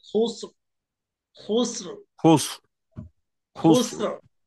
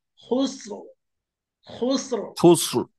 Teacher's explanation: لفي خسر আমি যদি لفي خسر আমি যদি বলি খুসর, তাহলে পাতলা হয়ে গেল, মোটা হবে খুসর, খুসর, خسر خسر খুসর। শেষে গিয়ে خسر হালকা একটু রয়ের বাতাস বেরোবে